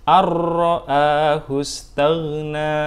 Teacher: Masuk bunyi nun sukun masuk ke dalam bunyi huruf ra, ar, tetapi kita tidak boleh membacanya terlalu lama.